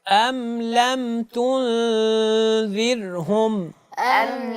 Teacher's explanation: ذال کی ادائیگی میں سیٹی نہ ہو۔